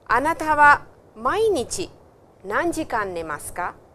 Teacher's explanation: With ka, please remember the intonation is always rising.